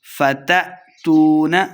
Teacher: حمزہ کو جھٹکے کے ساتھ پڑھنا ہے